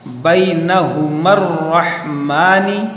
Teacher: میم کو ہم یہاں را سے ملا دیں گے